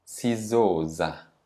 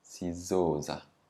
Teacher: Now the stress is on the zo because za is only one syllable.